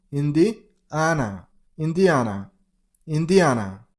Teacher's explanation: Stress on the third syllable. On A sound. Indiana, Indiana, Indiana.